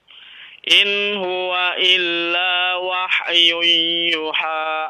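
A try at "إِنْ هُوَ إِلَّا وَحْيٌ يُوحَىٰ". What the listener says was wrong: Nah, yuha. Dipanjangkan, ada waw di situ kan?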